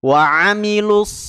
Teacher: huruf Shad punya sifat istila dia tebal berbeda dengan huruf Sin waamilus jadi lidah belakang kita naik ikut naik ya makhraj huruf